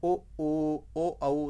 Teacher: जिन स्वरों के उच्चारण में ओंठों का आधार गोल हो जाता है उन्हें वृत्ताकार स्वर कहा जाता है